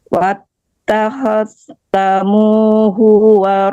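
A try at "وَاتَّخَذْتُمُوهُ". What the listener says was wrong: Akhlaztumuhu. Ibu, tumu bukan tamu ya.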